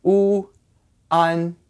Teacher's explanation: it's like a double vowel sound, but really it's just the two separate sounds collided into each other. So you get u, an, one.